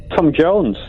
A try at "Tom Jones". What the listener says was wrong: You're saying Jones. You've made Jones into two syllables.